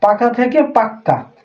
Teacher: একবার ছিল দুইবার উচ্চারণ হইছে